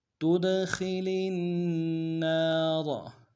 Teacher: تود، خا کو موٹا ادا کریں گے، لام کو اگلے نون کے سامنے لانا ہے، نون کے اوپر تشدید زور دیں گے، نون کے ساتھ الف مدہ ایک دال میں کھینچیں گے، را کو موٹا ادا کریں گے